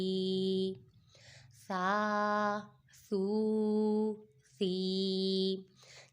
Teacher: سا حروف لساویہ میں سے ہے اور اس میں سیٹی کی آواز نہیں نکالیں گے